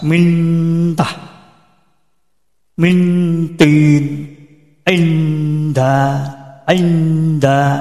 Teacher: Min ini kan lidah sudah menempel. Lidah sudah menempel, kita ucapkan tak, tinggal melepas. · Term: eva dekat